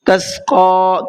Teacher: تسقیٰ کے قاف کو کھینچنا ہے اور منہ بھر کے پڑھنا ہے